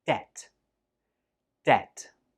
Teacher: Again, there is no B sound when we say this word. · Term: silent B